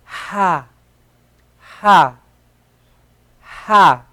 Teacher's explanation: So let's make like air, just all this air just coming out. Like when you say ha, all this air is coming out of your mouth.